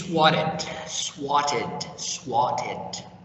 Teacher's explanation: Getting the double T, change the pronunciation to be like R sound